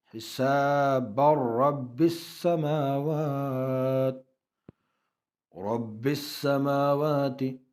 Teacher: تنوین کے بعد ینمرون میں سے را آئے ہیں، یہاں ادغام ہوگا بلا غنہ. حساب رب السماوات، رب السماوات، شد دو مرتبہ پڑھا جاتا ہے.